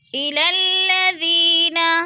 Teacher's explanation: یا مدہ کو ہم نے 1 الف 2 حرکات کے برابر لمبا کر کے پڑھنا ہے